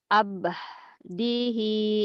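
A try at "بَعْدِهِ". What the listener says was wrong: Terbalik. Ba bukan. semuanya A-nya jadi terbalik. Itu ba dulu ya. Bukan alif. Nggak ada alif. Ba'dihi. Ba.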